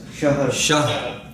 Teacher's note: ہا پر زبر نہیں, سکون ہے, اور را بھی ساکن ہو جائے گا وقف کی وجہ سے